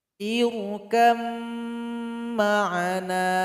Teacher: Maka dia mesti dilebur kalau bertemu. Sehingganya ba ini telah bergabung dengan huruf mim. Jadi enggak dibaca lagi dia. · Misalkan di sini ada huruf ba dan huruf mim yang berjumpa. Ba ini dan huruf mim tempat keluarnya sama. Sama-sama keluar dari dua bibir, namun sifatnya berbeda. Ba ini qalqalah, mim bukan qalqalah. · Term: idgham mutajanisain